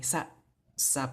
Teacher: it's always gonna have that glottal stop at the end